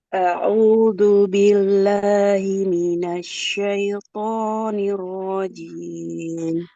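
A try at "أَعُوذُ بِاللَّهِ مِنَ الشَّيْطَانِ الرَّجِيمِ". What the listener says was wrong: Ulang dulu Ibu ta'awudnya. Jangan a'udu, a'udzu ya. Huruf zal.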